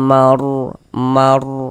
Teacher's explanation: Dibaca tebal. Ditebalkan huruf rnya ya. Mar seperti itu. Jadi pangkal lidah kita naik terangkat ke atas. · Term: tabkhim